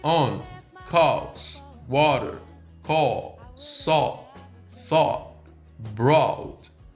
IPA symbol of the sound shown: ɔ